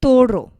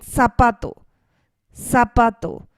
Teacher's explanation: the stress is placed on the second to last part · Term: penultimate syllable